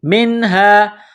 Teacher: ولا یقبل منہا، میم کو نون کے ساتھ پلس کرنا ہے، نون ساکن کے بعد حروف حلقی ہا ہے تو یہاں نون ساکن پر غنہ نہیں کریں گے، آواز ناک میں نہیں چھپائیں گے